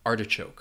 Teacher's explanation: In some cases, it may sound like people are dropping that R altogether, but I think you'll slightly hear it.